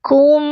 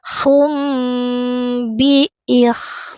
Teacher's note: Rapat bibirnya sedikit mengalir. Fa imsakum bi tanwinnya ganti menjadi mim. Tahan dengung